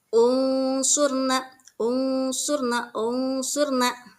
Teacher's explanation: nah bacaannya samar nunnya seolah-olah tidak ada ya unsurna nun sukun ke depannya bertemu dengan huruf Shad unsurna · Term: ikhfa